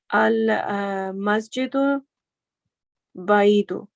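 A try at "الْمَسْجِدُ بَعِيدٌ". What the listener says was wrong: Correct. Ahsanti.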